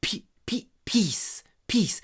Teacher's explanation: И из-за того, что этот и между двумя глухими согласными, мы его так произносим не полным голосом. Я бы даже сказал, только 30% голоса мы внедряем.